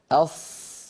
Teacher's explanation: لما يقول الواحد أص كما يقول أس، فصوت الصاد لها صوت معين أص لأنها مفخمة مستعلية مطبقة. لكن لما يقول أص هكذا ويزم شفتيه، صوت الصاد قد اختلف.